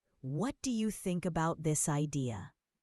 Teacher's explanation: Notice how your voice goes up a little at the end.